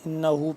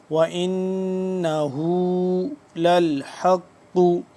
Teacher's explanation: इन्नाहु पे इनना पे गुना करेंगे इस पे नून मुशदिद है ये वाला और हा उल्टा पेश हु इसको हम लंबा करेंगे